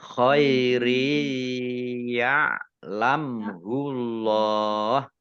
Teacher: ro kasroh tanwin bertemu dengan huruf ya, bacaan idgham bi gunnah, masuk dengan mendengung. Mendengung ya, ya-nya dibaca double, ditandai dengan ada tasdidnya.